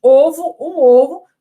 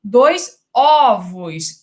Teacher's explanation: no singular o timbre é fechado e no plural o timbre é aberto. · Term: metafonia